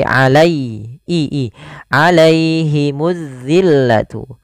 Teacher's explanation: keluarkanup kemud ada huruf Ya Sukun didahuli fathah ini bacaan Lin usahakan sempurna di dalam melafalkan kasrahnya melafalkan ya sukunnya jangan alaihimu jangan dibaca terdengar huruf E